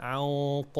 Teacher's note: ونخلي بالنا من الغنة مفخمة في الإخفاء